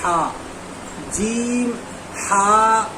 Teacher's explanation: اسی طریقے سے ہا کو ادا کرنا ہے تو ہا، دیکھیے جیم پر لکھا ہے جیم اور آگے لکھا ہے ہا پر ہا، یعنی اس کو کھینچ کر پڑھنا ہے اور پورا منہ کھول کر پڑھنا ہے، یعنی ہا جب بولیں گے تو یہ ہا جو ہے بیچ حلق سے ادا کیا جاتا ہے